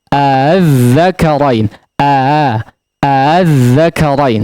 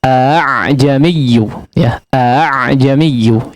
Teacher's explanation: Jadi hamzahnya tidak dibaca a secara tegas, ya, tapi a, ya, dibaca secara samar. Hamzahnya tidak betul-betul merapatkan antara kedua sisi makhraj atau antara sisi pangkal tenggorokan, ya. A tidak jelas seperti itu untuk hamzah yang kedua, ya. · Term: tashil